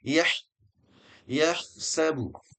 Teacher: huruf ha ya ini sama dengan ain keluarnya dari tengah tenggorokan. Wasatul halqi.